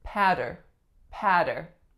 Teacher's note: the first vowel sound we have is ah then we have a flap going into Earth patter patter and our last syllable is sin